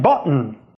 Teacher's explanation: the sound before the [n] in [bʌʔn]. This is called a glottal stop